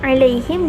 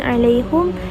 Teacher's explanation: Imam Hamzah membaca dengan dhammah, iaitu baris hadapan huruf ha pada 3 kalimah berikut di semua tempat Al-Quran, sama ada ketika wasal ataupun waqaf.